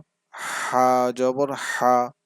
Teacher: হা টা কণ্ঠনালীর মধ্যখান থেকে